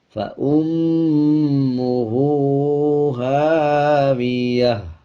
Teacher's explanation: وقف کرتے ہوئے تا کو ہا میں تبدیل کر دیں گے اور ہا کی آدھی آواز کو نکالا جائے گا۔ اب جیسے بغیر وقف کے ہم یوں پڑھیں گے، فَأُمُّهُ هَاوِيَةٌ، اور جب وقف کریں گے یعنی آیت کمپلیٹ کریں گے، فَأُمُّهُ هَاوِيَةٌ۔